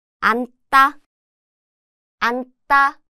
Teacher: When used as a 받침 at the end, the 지읒 sound disappears and it just sounds like 은, similar to the N sound in English.